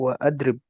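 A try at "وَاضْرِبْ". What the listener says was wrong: adrib ya, tapi wadrib. Kalau di wasal bacanya wadrib. Nah, dia kan asalnya idrib ya, dari eh, wazan fi'il amr, doroba yadribu idrib. Nah, kalau dipakai wa, ya, doroba wa yadribu wadrib.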